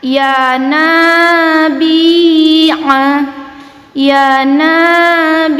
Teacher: Nah, di sini fathah yang diikuti oleh alif, kita panjangkan dua harokat ya. Bi kasroh diikuti oleh ya sukun, kita panjangkan dua harokat ya.